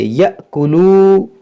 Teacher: یہ حمزہ جو ہے ساکن ہے، تو اس کو ہم جھٹکا دے کر پڑھیں گے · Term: حمزہ ساکن